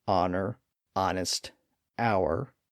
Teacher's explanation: there were a handful of stragglers where the H remained silent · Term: silent h